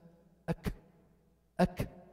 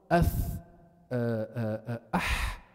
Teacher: You couldn't just block all the breath, there is still a slight breath going out. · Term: hams